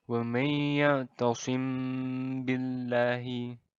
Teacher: cara membaca Ikhfa Syafawi ini adalah didengungkan dengan panjang dua harakat